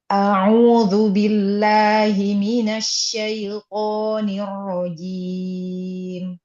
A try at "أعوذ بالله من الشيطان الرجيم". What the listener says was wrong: Ya, masih di a'udzu, Coba seperti ini ya. Hamzah, kemudian ain, waw mat, kemudian zal. Ya, ini satu kesatuan kata. Jika kita memanjangkan di hamzah, maka akan menjadi istifham. Artinya menjadi pertanyaan kalimatnya.